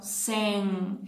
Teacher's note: A língua tem que ficar na posição para baixo e a gente vai fazer o som nasal. Porque este som é nasal.